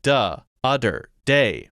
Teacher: The TH, stop. D for TH.